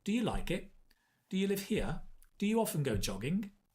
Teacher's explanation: it's a rising intonation when you have open questions